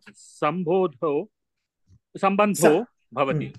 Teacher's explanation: Now here too you find the visarga has changed into o, so instead of the visarga you have o here.